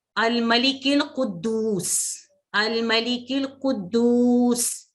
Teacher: जब वस्ल में मिला के पढ़ेंगे तो ये अलिफ गिर जाता है, इसको नहीं पढ़ा जाता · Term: हमज़तुल वस्ल